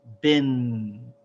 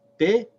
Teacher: So it has the same vowel, but we have to add the noon sound at the end. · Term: tanween